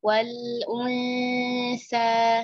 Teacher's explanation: sa di sini dua harakat karena kita waqaf